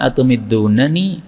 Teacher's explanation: Yang pertama atumiddunani, boleh dibaca panjang nani.